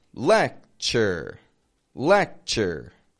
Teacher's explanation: they each have a T sound that, again, isn't making a regular T sound. It's kind of making a ch. And then it blends with the following U, lecture, lecture.